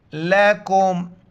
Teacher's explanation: چھوٹی کاف ہے باریک کر کے میم کے ساتھ ملائیں گے